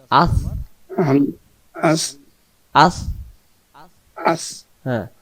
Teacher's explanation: হামজা অক্ষর হলকের প্রথম থেকে শক্ত করে পড়তে হয়